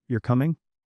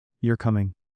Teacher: And don't forget intonation, whether your pitch rises, falls, or stays level. Like, if I ask, you're coming? My voice goes up. But if I say, you're coming, it falls.